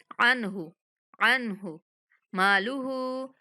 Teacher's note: हा को 1 सेकंड तक लंबा करेंगे क्योंकि उल्टा पेश है